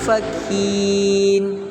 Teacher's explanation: Alasannya karena nun sukun bertemu dengan fa. Jadi cara bacanya samar dengan dengung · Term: ikhfa